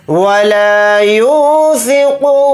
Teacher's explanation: क़ाफ़ को यहाँ पर मोटा यानी पुर पढ़ेंगे